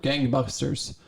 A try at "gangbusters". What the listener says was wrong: Gang. It sounded like you said. Well, I know gangbusters, but it sounded like you said gang buckers.